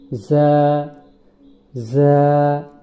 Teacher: জিহ্বার আগা নিচের দাঁতের, সামনের নিচের দাঁতের গোড়ার সঙ্গে লাগিয়ে যা উচ্চারিত হয়। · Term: ঝা